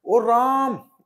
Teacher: प्लुत स्वर, कि जिन स्वरों को बोलने में अत्यधिक समय लगता है, जैसे कि हम किसी को चिल्ला करके कहें ओ राम, ऐसे करके, यानी कि हमने क्या करा, राम का आ बहुत लंबा खींच दिया